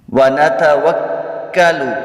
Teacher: ونتوکل کاف جو ہے مشدد ہے، اس کو جماع کے ساتھ ادا کریں گے